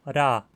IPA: ɾ